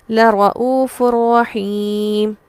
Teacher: حرف مدہ کے بعد سکون عارضی، مد عارض وقفی جس میں طول اولا ہے، لمبا کرنا پسندیدہ ہے